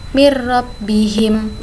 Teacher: Nun sukun di sini juga hilang karena langsung masuk ke huruf ro, seperti ada tasydidnya. Tapi di sini membacanya tidak perlu mendengung begitu. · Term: idgham bila gunnah